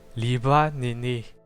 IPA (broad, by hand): li'βa ne'ne